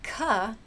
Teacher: ka, guess what, is a voiceless velar stop.